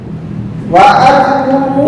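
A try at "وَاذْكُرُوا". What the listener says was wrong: Wadkuru. Ya, ini tanda kemarin di ingat shad. Ini adalah singkatan wasol. Apa maksudnya hamzah wasol? Hamzah wasol jika di tengah enggak terbaca. Wadkuru langsung ya.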